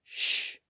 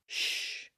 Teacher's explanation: the voiceless sound sh that's probably the most appropriate voiceless sound because it's the sound we make when we want someone to be quiet